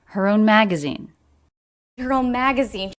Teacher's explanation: she pronounces a light h sound even though it's unstressed